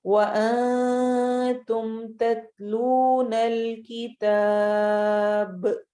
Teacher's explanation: آخر میں اگر ہم یہاں پہ رک رہے ہیں تو ہم با کے اوپر جزم لگائیں گے، اور جب با پر جزم لگے گی تو وہ اس صورت میں اس پر قلقلہ ہوگا. تو جب ہم سٹاپ کریں گے تو با کی آواز میں ایک گونج ہوگی